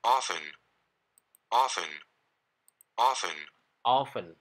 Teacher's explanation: Selanjutnya, kata yang punya arti sering, dibacanya sering kita dengar bacanya often, pakai T, padahal ini hanya dibaca often, tanpa T.